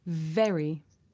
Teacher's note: When I say very, very, my teeth are touching my lip.